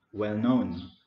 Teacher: So the main stress is on known, well known.